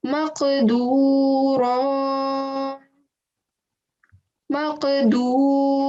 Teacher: I'm stretching the sound out for 2 seconds towards the end.